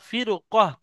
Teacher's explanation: হ্যাঁ, ফির কহ, ছোট হা এটা। ছোট হা মুখের গোলার শুরু ভাগ থেকে উচ্চারণ হয়